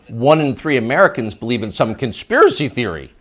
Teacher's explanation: You'll notice the upspeak, the rising inflection at the end of the sentence.